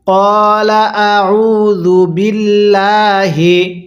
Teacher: এই হামজায়ের মধ্যে টান দিব না, আইনের মধ্যে টান দিব